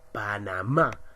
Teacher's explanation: sé cuándo termina en vocal cualquiera de las vocales panamá mira la mayor fuerza de voz está en más